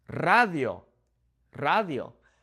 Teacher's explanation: In Spanish, when we have a word that starts with a singular R, we will roll it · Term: rolling